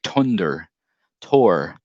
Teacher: the th sound for for him was always more like a t right so he would say tunder tor you know um that